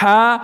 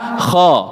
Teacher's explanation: kalau fathah jelas beda nih, Mbak. Ha, kha, satunya ke arah A, satunya ke arah O